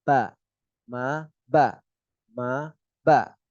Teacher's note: Kalau menempel jadi ba nanti. Kalau mim nempel tapi ringan. Nah Kalau ba itu nempel tapi tekan